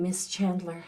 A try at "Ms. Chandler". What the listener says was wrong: Ms. You said Miss. Miss Chandler, it's Ms.